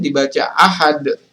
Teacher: dia adalah huruf ee masuk dalam hukum bacaan Qalqalah kubra karena huruf Qalqalah Dal ini diwakafkan cara membacanya adalah dipantulkan lebih tebal